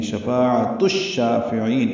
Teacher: شفاعہ میں فا الف مدہ ہے، عین وسط حلق سے ادا ہوگا، تائے مربوطہ جلدی اور معروف پڑھیں گے اور اس کو شین سے ملا دیں گے · شفاعۃ الشافعین ادغام شمسی ہوگا، الف لام نہیں پڑھیں گے. شین کو 2 حرکات لمبا کرنا ہے، فا کو جلدی پڑھنا ہے، عین کو لمبا کریں گے. وقفاً مد عارض سکون بنا کے نون ساکن پہ اظہار ہوگا.